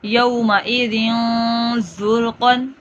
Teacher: خلق عظیم، صعیدا زلقا، یومئذ زرقا، رال کو نرمی سے اور زا میں سیٹی کی آواز